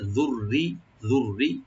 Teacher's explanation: রাটাকে double করে পাতলা করে পড়বো, লাইট করে